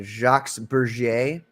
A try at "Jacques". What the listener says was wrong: Yeah, you don't pronounce the S. It's Jacques. You don't pronounce the Jacques.